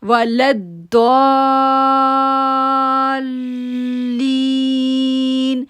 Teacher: اب لام کو داد کے ساتھ جوڑیں گے اور داد کو ہم جو ہے وہ 6 سیکنڈ کے لیے کھینچیں گے